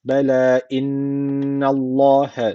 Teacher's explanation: Allah lafzını burada kalın okuyoruz. Çünkü öncesindeki harfin harekesi üstte. Yani Allah lafzına üstten giriş yapılıyor.